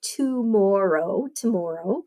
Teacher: you got to go full long o on the second o